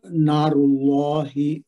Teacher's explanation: را کو موٹا پڑھیں گے کیونکہ اس پہ پیش آ رہی ہے، اس پہ دمہ ہے. اللہ کے لام جلالہ کو بھی موٹا پڑھیں گے